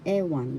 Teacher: First syllable e, second syllable one. The accent is in the first syllable.